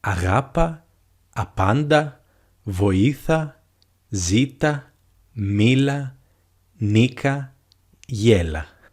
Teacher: In this case, we will just use the ending a, and we will put the stress on the second syllable from the end